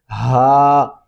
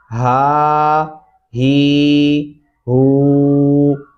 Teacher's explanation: ये दो आंखों वाला भारी हा जो मोटी आवाज़ से निकलता है सीने से